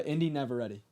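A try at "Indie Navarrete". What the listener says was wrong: It almost sounds like you're saying never ready.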